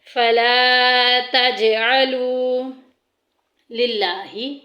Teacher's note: لفظ اللہ کا لام باریک پڑھا جائے گا